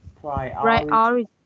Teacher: you put like the stress on the second syllable